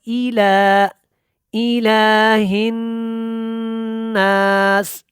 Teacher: لام کے اوپر کھڑی زبر ہے اور ای کو لمبا نہیں کرنا · نون کے اوپر کیا کرنا ہے؟ شد کی وجہ سے غنہ کرنا ہے